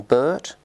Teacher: We have U as in Bert, which is mid, central, unrounded, and tense.